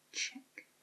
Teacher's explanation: Next, we have the TCH sound, like in the word check. Check is like a CH with a T sound in front of it. So instead of it being like shake, instead of it representing like just a sh sound, get a T in front of it.